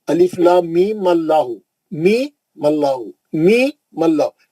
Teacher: وہ بیچ میں کا الف وصلیہ گر جائے گا.